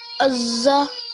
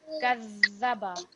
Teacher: the za, it's thicker and it's a bit rounder, but the dhal, it's a little bit softer. So kadhaba alladhina, and you can hear a slight vibration in that letter.